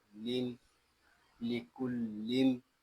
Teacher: میم ساکن ہے، اس کو سکون کے ساتھ ادا کریں گے اور یہاں میم ساکن میں اظہار شفوی بھی ہوگا